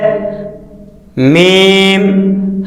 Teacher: میم، دونوں ہونٹوں کے خشک حصہ سے ادا ہوتا ہے